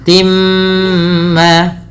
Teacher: bunyi awalnya Tin bertemu dengan mim suara tinnya masuk kepada huruf mim maka dihukumi dengan bacaan Idam bunah dengan menahan bunyi suara mnya